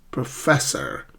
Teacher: So do not stress the first syllable. It's the second syllable.